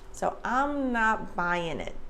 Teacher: the N at the end connects to the I in it.